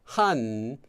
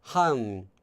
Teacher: the N having a sound that's kind of made with your tongue between your teeth. So instead of, normally it would be like han, where your tongue is kind of up here toward the back of your teeth, han.